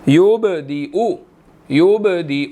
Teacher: با ساکن ہے، قلقلہ ہوگا، حروف قلقلہ میں سے ہے